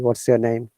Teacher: this is called monotone, where the rhythm goes same, flat.